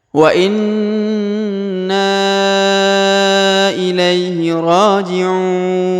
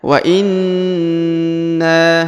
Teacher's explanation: huruf Na yang berharokat tasdid ini ditahan, ditekan, ditahan selama 2 harokat.